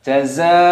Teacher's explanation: di sini ada mad wajib mutasil dipanjangkan 6 ketukan